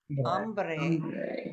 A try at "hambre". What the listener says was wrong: Okay, this word, I want to show you why this illustrates why these vowels are so super important. Hambre, hungry, has a very different meaning from hombre.